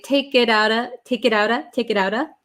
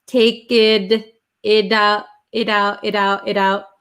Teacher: the T is between an I and an O. So it becomes a flap T.